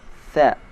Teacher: Huruf tha, cara mengucapkannya ujung lidah sedikit dikeluarkan. Tha. Tidak terdengar suara S.